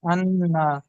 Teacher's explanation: এক আলিফ পরিমাণ খুব সুন্দর হ্যাঁ নুনের উপর তাজদ এসছে তাই নুনকে এক আলিফ পরিমাণ গুন্না করে পড়তে হবে